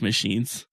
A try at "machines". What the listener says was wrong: No, because can't do the SH sound.